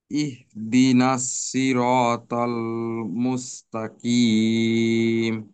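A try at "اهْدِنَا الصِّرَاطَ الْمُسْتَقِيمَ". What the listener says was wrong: এখানে সদের উচ্চারণটাকে আরেকটু ভারি করতে হবে।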